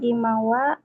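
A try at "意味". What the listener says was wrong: Imi, imi. Imi. I dan mi ya. Jangan ingat-ingat kalau ima sekarang.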